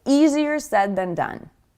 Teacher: Sometimes people even completely omit that word it and just say easier said than done.